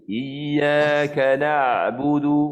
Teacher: Huruf ain ni pastikan betul-betul point makhraj itu di tengah kerongkong kita. Iyyaka jangan bunyi di hidung.